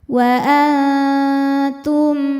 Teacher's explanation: Wa antum, ada hukum ikhfa hakiki aqrab karena nun sukun bertemu dengan huruf ta. Cara bacanya nun disamarkan ke ta disertai dengung. Dengungnya sedikit, kesamarannya atau suara yang keluar dari mulut masih banyak. Wa antum, tum ada hukum izhar syafawi karena mim sukun menghadapi ha, tidak menghadapi mim atau ba, maka mim sukun dibaca dengan jelas.